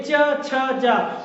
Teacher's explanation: जैसे च, तो बोलिए च छ जा, तो इसमें क्या दांत और तालु से ये जीभ स्पर्श हो रही है, इसीलिए तालव्य है